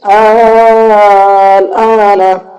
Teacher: یہاں پر بھی وہی قاعدہ ہے، مد لازم کا ہے پہلا والا، حروف مدہ کے بعد میں لام پر جزم ہے جس کی وجہ سے یہاں پر مد لازم ہوگا، 3 سے 5 الف کے برابر کھینچنا ہے۔ دوسرا حمزہ پہ کھڑا زبر ہے، 1 الف کے برابر کھینچنا ہے